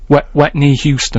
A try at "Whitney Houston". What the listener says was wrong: No, don't try and make wet sound like wit.